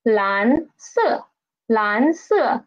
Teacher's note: The second tone rises up. And then at the highest pitch, it just falls down.